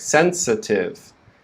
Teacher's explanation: sensa and then we finish the word with tiv sensitive sensitive notice the syllable with the schwa is very quick